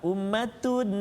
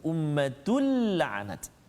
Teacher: Ataupun kita tak dengung tapi kita pegang ummatun, lama juga pegang, tak boleh juga. Kita kena jelaskan bacaan kita tanpa dengung kat situ. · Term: idgham bila gunnah